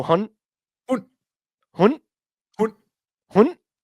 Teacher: It's actually HUND, but the D is like not really like pronounced.